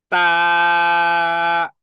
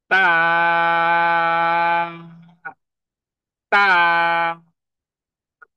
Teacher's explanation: সামনের দাঁতের গোড়ার সাথে জিহ্বার আগাকে লাগিয়ে দিয়ে টাচ করে দেন আপনাকে 3 হারাকা বা 2 হারাকা পরিমাণ টেনে লম্বা করে পড়তে হবে তা, তা।